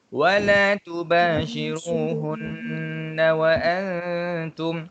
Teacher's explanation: hunna nun sabdu wajibul gunnah, kena dengung dua harakat.